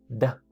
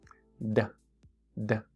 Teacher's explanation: Es la D del inglés que hace que la punta de la lengua toque nuestra parte superior del paladar.